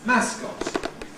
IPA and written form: ˈmæskɒt (mascot)